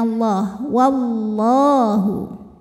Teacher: lam jalalah dibunyikan secara tafkhim karena didahului harakat fathah maka lamnya tebal bunyinya Allah wallahu kemudian Alif lamnya dinamakan dengan alif lam syamsiyah